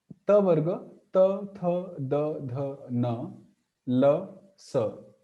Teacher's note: the tongue is hitting the upper teeth from behind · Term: Dental